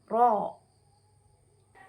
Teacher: masuk pada punggung lidah tapi tidak menyentuh langit-langit atas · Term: huruf ro